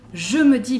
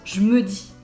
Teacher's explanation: Even if ME doesn't start with a vowel, we shorten it anyway. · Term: elisions